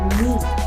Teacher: the tongue is raised towards the front of the mouth and the lips are relaxed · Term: front vowel sound